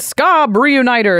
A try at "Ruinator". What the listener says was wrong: You said Reuniter.